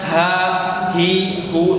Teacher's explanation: Bahkan ada istilah hak dada, itu salah. Yang betul hak itu di tenggorokan, bukan di dada. Karena makhraj itu tidak lewat dari tenggorokan, tidak sampai ke dada, sampai tenggorokan saja, kemudian naik ke atas ke bibir. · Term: ha besar